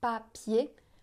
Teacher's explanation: Si on met la main devant la bouche, papier, on sent pas d'air.